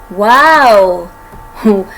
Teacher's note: वाव में दांत हमारे होंठों के साथ नहीं लगते, सिर्फ होंठ गोल करके वाव बोला जाता है। और एक ये वाहिद ऐसा लेटर है अरबिक में जिसमें हमने होंठों को गोल करना है।